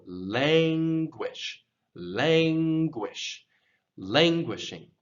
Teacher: this emphasis goes on the first syllable lange and often when we emphasize the syllable in english we will elongate it and raise the tone